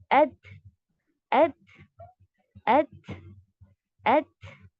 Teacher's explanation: इसमें भी शिद्दा की सिफत के बाद आपने हम्स करना है, यानी टाइटली आप बंद करेंगे, वॉइस को स्टॉप कराएंगे